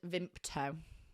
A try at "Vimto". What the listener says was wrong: Vimpto or Vimto? It's not Vimpto, though. It's Vimto.